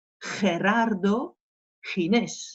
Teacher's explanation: C'est ce fameux R du fond de gorge. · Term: la jota